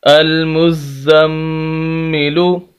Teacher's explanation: نون مشدد، میم مشدد، تنوین یعنی دو زبر دو زیر دو پیش، ان چیزوں پر غنہ ہوتا ہے، تو یہاں پر غنہ ہوگا المزم، لام پیش لو، المزملو، سخت کرنا ہے، زا کو بھی اور میم کو بھی اور غنہ بھی کرنا ہے۔